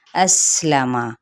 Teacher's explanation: اسلم، حمزہ کی زبر کو سین کے ساتھ سین پہ سیٹی کو واضح کریں گے۔ لام کی زبر اور میم کی زبر، ان حرکات کو ہم لمبا نہیں کریں گے، جس کو عربک میں فتحہ بھی کہا جاتا ہے۔